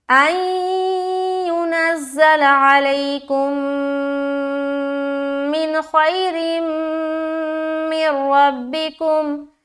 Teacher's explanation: تو جب یہ 2 حرف آ جائے تنوین یا نون ساکن کے بعد تو ادغام تو کرتے ہیں لیکن غنہ نہیں کرتے, یعنی کہ ملاتے تو ہیں لیکن دیر نہیں لگائیں گے, ناک میں آواز نہیں روکیں گے بلکہ جلد نکلیں گے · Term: ادغام تام